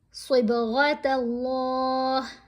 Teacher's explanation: یہاں صاد کو، غین کو اور یہاں اللہ کی لام کو موٹا پڑھنا ہے